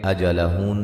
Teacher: ذال الف مدہ ہے، بلغ غین کو موٹا ادا کریں گے، اجلہن نون مشدد پہ غنہ ضروری ہے، غننے کی مقدار ایک الف کے برابر ہوتی ہے